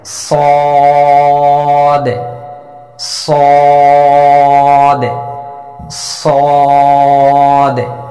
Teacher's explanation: জিহ্বার আগা, সামনের নিচে দুই দাঁতের পেট ও আগার সঙ্গে লাগিয়ে মোটা আওয়াজে উচ্চারণ করতে হবে, 4 আলিফ পরিমাণ টেনে।